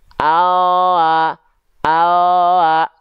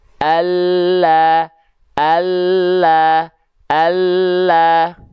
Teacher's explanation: lam itu keluar dari tepi lidah bagian depan yang kanan dan tepi lidah depan bagian yang kiri keduanya nih menyus sampai ke ujung lidah menentuhkan ke langit-langit set